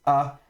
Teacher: Donc, si vous avez un mot qui commence par le aleph, avec par exemple un kametz, vous avez ici le mot on doit commencer toujours la lecture par la consonne, donc ici en l'occurrence le aleph mais qui est muet, donc on prononcera uniquement la voyelle. Donc ici le kametz, a.